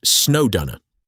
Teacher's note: To pronounce this like a native, run the D sound from snowed right into the U sound of under